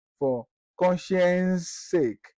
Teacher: The first one for consideration is that when you have two words or a succession of words where there is a succession or a repetition of sound, that is voiceless alveolar fricative, that is occurring 3 times in the two words